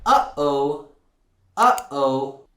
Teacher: it's your glotus opening and closing really fast that's a gloal stop